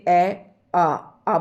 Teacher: बोल कर देखें कि कंठ से इनका उच्चारण हो रहा है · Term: कंठे ध्वनियां